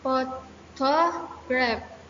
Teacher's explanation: the tertiary stress, the weakest emphasis usually on the third syllable. For example, photograph.